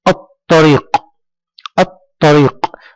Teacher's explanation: لم تنطق اللام، ممتاز، ولكننا انتقلنا من الألف إلى الطاء مباشرة، إذن فهي لام شمسية.